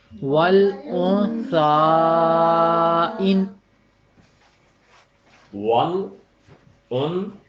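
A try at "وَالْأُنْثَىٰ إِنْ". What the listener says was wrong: ان تھوڑا سا غنہ کی دینا چاہیے آپ کو تاثر اس میں۔ ان، اور اگر آپ نے رکنا ہو تو پھر پھر آپ اس میں مد کا پورا اظہار کریں گے۔ تو ایک دفعہ پھر بولیے، ایک دفعہ مد کے ساتھ اور ایک دفعہ بغیر مد کے ساتھ آپ اس کی ادائیگی کریں۔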